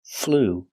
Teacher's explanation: It's the ooh sound. It's a long ooh